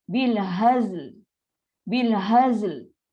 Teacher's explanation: Dia ada bunyi lam tu. Dan bunyi lam tu tak ada betul-betul sebiji lam. Dia bunyi macam 1/3 bunyi je dia.